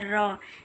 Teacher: हमारी जीभ जो है कि थोड़ा सा ऊपर उठ के और फोल्ड होती है और झटके से फिर बाहर आती है। ठीक, तो इसलिए इसे लुंठित कहते हैं, लुंठित व्यंजन कहते हैं। · लुंठित व्यंजन इसलिए कहते हैं कि जीभ मुख के मध्य आ जाती है और बार बार झटके से आगे पीछे गिरती है। तो आप र का उच्चारण करते होंगे तो देख पाएंगे, उसको महसूस कर पाएंगे कि जब हम बोलते हैं र, तो हमारी जीभ जो है कि थोड़ा सा ऊपर उठ के और फोल्ड होती है और झटके से फिर बाहर आती है।